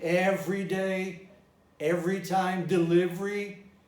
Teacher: There is a strong tendency for the schwa, which is not stressed, to disappear. For example, in everyday, every time, delivery, well, when the schwa is not stressed, it disappears.